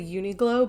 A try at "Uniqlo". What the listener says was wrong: Uniqlo. Yeah, there's no G. Uniqlo.